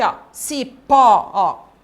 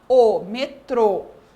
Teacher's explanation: quando eu falo a sílaba do acento circunflexo fica um som mais fechado